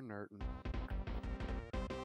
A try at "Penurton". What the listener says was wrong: No, it's Penurton. You gotta pronounce the P.